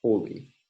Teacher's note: the monophthong O basically arises when an L follows, when a lateral approximant follows